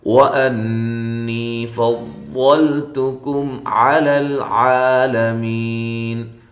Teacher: پڑھنا ہے، میم ساکنہ کا اظہار ہے، وَأَنِّي فَضَّلْتُكُمْ عَلَى الْعَالَمِينَ، ان نون مشدد پہ غنہ ضروری ہے ، نی یا مدہ ہے، فضل ضاد کو اس کے مخرج · ان نون مشدد پہ غنہ ضروری ہے، نی یا مدہ ہے، فضل ضاد کو اس کے مخرج سے نکالیں، موٹا ادا کریں ، لام کو ہلانا نہیں ہے، تا اور کاف دونوں باریک